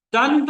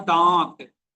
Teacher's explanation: अनुस्वार के उच्चारण में सांस केवल नाक से निकलती है। जबकि अनुनासिक के उच्चारण में वायु मुख और नाक दोनों से एक साथ निकलती है। अनुनासिक धीमी ध्वनि है और अनुस्वार तीव्र ध्वनि है।